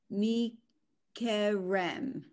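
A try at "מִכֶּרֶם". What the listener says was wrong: That's a D.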